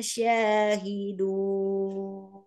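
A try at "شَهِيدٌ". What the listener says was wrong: Jangan SY memang SY dalam bahasa Indonesia ya tapi langsung bacanya S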